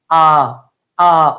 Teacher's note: কেন্দ্রীয় ধ্বনির উচ্চারণ হচ্ছে বিবৃত।